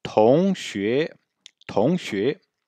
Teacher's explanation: Donc on a deux tons montants. Si on part du grave vers l'aigu, on part du milieu et on monte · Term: ton montant